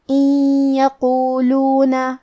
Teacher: کلمت ان کے آخری میں نون ساکن ہے، پھر حرف الیا ہے کلمت یقولون، یہاں حکم ہے ادغام بغنہ، تو ہم یہ حکم کو غنہ اور تشدید کے ساتھ ادا کریں گے۔ ان یقولون، کلمت یقولون میں حرف القاف کو موٹی آواز میں پڑھیں گے۔